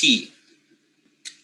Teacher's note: t is a voiceless alveolar stop